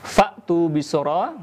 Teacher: ada hamzah bertanda sukun. Maka rumusnya JS atau jeda sesaat, artinya tidak mengalirkan suara dan nafasnya. Maka terputus suaranya.